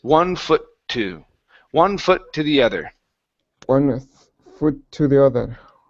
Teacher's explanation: you want to combine these two sounds here because this word ends with the T, the next one starts with it.